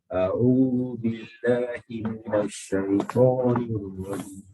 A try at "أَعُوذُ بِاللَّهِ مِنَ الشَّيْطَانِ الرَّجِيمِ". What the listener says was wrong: The ain. Squeeze out the ain. Minash. Everybody's picking on the noon today. Why are you all picking on the noon? Minash.